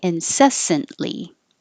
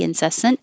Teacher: The T and the L are made in the same place. So once you go up for the T, incessant, hold it and make the L.